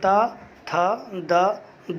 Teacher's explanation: हमारी जीभ आकर के दांत के आगे के हिस्से पे छूती है, लड़ती है, तो इसलिए इसको हम लोग बोलते हैं दंत्य वर्ण यानी दंती वर्ण।